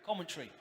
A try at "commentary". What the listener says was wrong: You're saying two words. You're saying common tree, like pine tree, oak tree, stuff like that. A common tree, a palm tree.